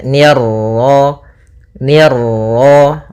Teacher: Nah, kemudian pada lafaz ma ada bacaan mad tabi'i yaitu fathah bertemu alif, ni tipis ketemu ra yang ra tafkhim, ra tebal